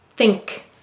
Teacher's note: the n moves back a little bit because of the k